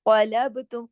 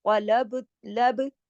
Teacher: قلبتم، قاف موٹا، با پہ کلکلا ، قلب، لب، با پہ دیکھیں لب، اس طرح سے، تم